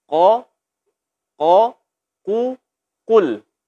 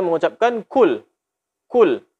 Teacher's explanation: huruf qaf tebal, adapun huruf kaf tipis. Maka hati-hati karena huruf ini berdekatan makhrajnya.